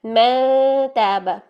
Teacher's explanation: नून ना तो जाहिर हो रहा है ना पूरी तरह मर्ज हो रहा है, ठीक है। मैं ताबा, ता के करीब जाके मैं हो रहा है, जबकि मिनकुम में क्या था, मिनकुम में काफ की हल्की सी साउंड मर्ज हो रही थी, ठीक है। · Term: इख्फा